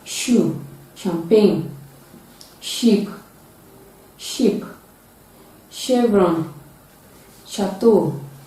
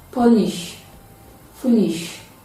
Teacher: it is a voiceless palatal alveolar fricative sound